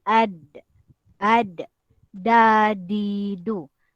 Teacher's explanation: ujung lidah ditekan ke gusi bahagian atas